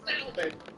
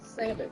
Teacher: that L in salmon is silent. It is not salmon, it's salmon.